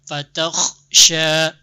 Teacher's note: ada yang perlu diperbaiki juga mematikan huruf kha. Jangan ngekor dia.